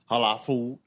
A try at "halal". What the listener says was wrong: Repeat that again, because that shit sounded stupid as hell when you said it. Halal food. That's you just said it fast. It sounded retarded.